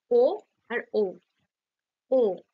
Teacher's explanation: ঠোঁটটা কি হচ্ছে গোল হচ্ছে কুঞ্চিত হচ্ছে ও তাই কণ্ঠস্ঠ বলা হচ্ছে ও দেখো ডিরেক্ট কণ্ঠ থেকে আসছে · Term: কণ্ঠ উষ্ঠ স্বর